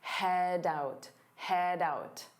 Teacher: Notice how head out combined together to sound like head out doubt. So you hear that D sound on out